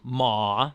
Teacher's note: the second tone, that's ma in the second tone, the one that goes up